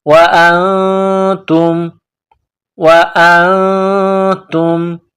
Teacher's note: نون ساکن کے بعد تا ہے, حروف اخفا ہے تو غنہ کریں گے, آواز ناک میں چھپائیں گے.